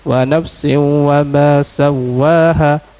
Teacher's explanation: Tanwin berjumpa dengan waw. Idgham ma'a gunah.